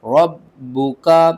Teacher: با کے اوپر تشدید ہے، سختی کے ساتھ پڑھیں گے اور 2 بار پڑھیں گے